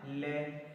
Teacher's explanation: ले को बोलते समय जीभ तालु को टच करती है और दोनों साइड से आवाज वायु बाहर आती है, इसलिए इसको मतलब आवाज किनारों से बाहर आती है, इसलिए इसे क्या बोलते हैं? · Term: पार्श्विक व्यंजन